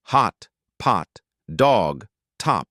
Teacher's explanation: Open your mouth as wide as possible. Drop the jaw. Keep the lips unrounded. Tongue is low and back. Think of a doctor asking you to open wide and say ah.